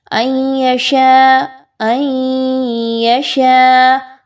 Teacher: غنہ کر کے پڑھیں گے، نون ساکن کے بعد یا کا حرف ہے، ادغام مع الغنہ